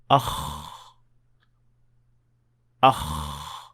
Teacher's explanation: To understand what I mean, try touching your throat when pronouncing the Kha sound. You should feel no vibration whatsoever, since you should not be using your vocal cords.